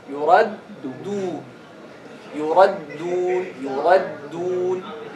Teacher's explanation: You don't round the lips right away with the first dal.